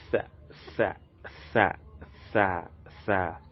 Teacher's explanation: So it's pronounced instead that we'll place the tip of our tongue in between our upper and lower incisors. So the tip of the tongue is placed in between the upper and the lower incisors, and it is pronounced to be tha.